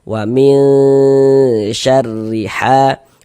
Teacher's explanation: huruf ra memiliki harokat kasrah dibaca tarki, baca tipis. Kemudian ha dibaca panjang.